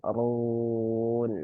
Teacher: roknya dibaca tebal karena dia berharokat dhammah